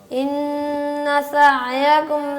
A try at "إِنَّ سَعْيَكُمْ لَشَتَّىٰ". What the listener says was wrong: آپ کو، آپ زبان نکالنے لگ جاتے ہیں سین نکالنے کے لیے. زبان کو اندر رکھیں.